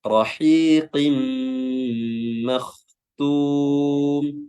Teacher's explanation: Kalau qin makhtum tanwin atau kasratain bertemu dengan huruf mim, maka hukumnya adalah idgham bi gunnah, ya, memasukkan dengan gunnah dengan dengung yang ditahan. Rahiqim makhtum, ya, kha-nya di sini tebal, ya, jangan makhtum, tapi makhtum, ya.